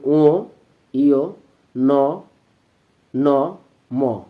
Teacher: এই বর্ণগুলো উচ্চারণের সময় আমাদের ফুসফুস থেকে বাতাস মুখ দিয়ে বের না হয়ে নাক দিয়ে বেশি পরিমাণ বের হয়, যে কারণে আমাদের এই ধ্বনিগুলো কিছুটা সানুনাসিক হয়। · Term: নাসিক্য বর্ণ